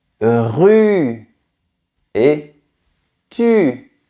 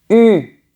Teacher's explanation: Ta langue est bien en avant et elle touche les dents du bas.